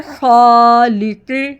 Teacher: خا، اب پڑھیں گے خالق، قاف بھی ہیوی حروف، خالق۔ خا کو گلے کے شروع سے، قاف کو زبان کی جڑ سے، ٹنگ کے روٹ سے